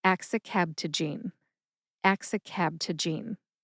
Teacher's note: Put all 5 syllables together and you get axicabtagene. Emphasize ax and KAB. KAB gets slightly more emphasis.